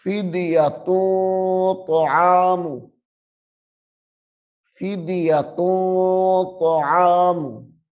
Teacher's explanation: تنوین کے بعد حروف اخفاء میں سے طا آ رہا ہے تو یہاں پہ اخفاء ہوگا، یعنی غنہ کریں گے